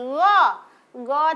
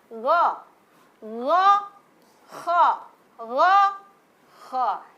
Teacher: Tempat keluarnya di tengah tenggorokan atas ya.